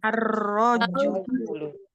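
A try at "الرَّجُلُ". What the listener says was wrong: Ada yang tebal sekali ya bacanya. Ar-rajulu. Ar-rajulu. Ya, bacanya.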